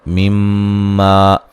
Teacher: میم مشدد پہ غنہ ضروری ہے